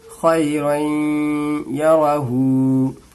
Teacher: रई में नाक में आवाज को थोड़ी देर रखनी है, इसी को गुन्ना कहते हैं।